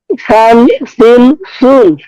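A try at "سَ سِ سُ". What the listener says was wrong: একরকম সেম, একরকম হয়ে যাচ্ছে। আমি সিনেরটা আগে বলি, পরে সাতটা তো বললাম, সিনেরটা সান, সিন, সুন। জি, সান, সিন, সুন। আর উপরেরটা হচ্ছে টান, সিন, সুন।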